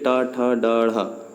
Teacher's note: मूर्धन्य यानी जिसको बोलते समय जीभ मुड़े